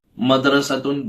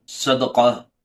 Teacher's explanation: دال کا مخرج جو ہے آگے کے دانت اور زبان کی نوک ہوتا ہے، اس سے دال نکلتا ہے